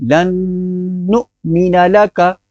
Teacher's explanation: حمزہ کو جھٹکا دیں گے، نون پر غنہ کریں گے کیونکہ نون مشدد ہے